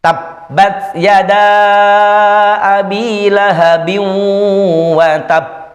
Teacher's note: Huruf qalqalah ditekan dulu karena tasydid, kemudian dipantulkan.